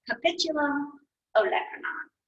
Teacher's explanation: you put the emphasis on that middle or that second syllable, and it's the same for the olecranon process.